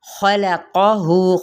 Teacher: खलक़हु खौफ हरूफ मुस्तआलिया में से है, क़ौफ भी हरूफ मुस्तआलिया में से है, दोनों हरूफ को पुर पढ़ा जाएगा, लेकिन लाम बीच में बारीक पढ़ना, ये आपने बीच में इसको पुर नहीं करना।